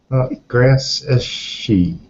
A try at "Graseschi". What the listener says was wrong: Ski, actually. It's the Italian CHI.